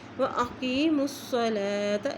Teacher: ساتھ ملائیں گے، واو کے اوپر شد ہے، حسنا واقیموا الصلاۃ، میم کی پیش کو صاد سے ملائیں گے کیونکہ صاد کے اوپر شد ہے ، واقیموا الصلاۃ، لام کے اوپر کھڑا زبر ہے، ایک حرکت